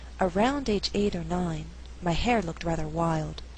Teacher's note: an alternative reading would stress only hair and wild in the second half of the sentence the sentence would then have to be read at a faster